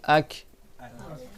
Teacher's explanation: Ak, là où ton souffle il s'arrête, c'est là où la lettre elle sort. Ak, tu vas voir que c'est le fond de ta langue qui touche le haut de ta bouche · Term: Kaf